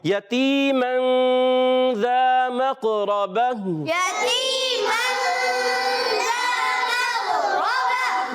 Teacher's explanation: پیارے بچوں یہ یاد رکھیں چاہے دو زبر کی تنوین ہو، چاہے دو زیر کی ہو یا دو پیش کی ہو، تنوین ہونا چاہیے یا نون ساکن ہونا چاہیے، جب اس کے بعد حروف اخفا میں سے کوئی حرف آئے گا تو وہاں غنہ ادا کریں گے۔ ذال کی ادائیگی کلیئر رکھیں گے، زا سے نہیں بدلنا چاہیے · ذال کی ادائیگی کلیئر رکھیں گے، زا سے نہیں بدلنا چاہیے، مقربتن میں قاف حرف مستعلیہ میں سے ہے، موٹا ادا کریں اور قلقلہ بھی ادا کریں گے، اور را پر زبر آنے کی وجہ سے یہ بھی موٹا ادا ہوگا، اور وقف کی صورت میں گول تا کو ہا سے بدل دیں گے، ماشاءاللہ، یتیما ذا مقربہ، يتيما ذا مقربة، ماشاءاللہ ماشاءاللہ۔